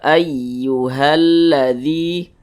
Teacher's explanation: berubah menjadi Mad Jaiz munfasilah panjangnya itu boleh empat harakat boleh juga 5 harakatah untuk lebih mempermudah empat harakat itu kira-kira